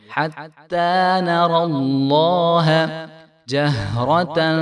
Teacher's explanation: تو یہاں پہ جو ہے را موٹا ہے، نون کو باریک ادا کریں گے اور را کو خوب موٹا کریں گے ادا